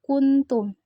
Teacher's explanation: Ketika mengucapkan huruf nun mati, ujung lidah hampir menyentuh pangkal 2 buah gigi atas sesuai makhraj huruf ta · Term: ikfa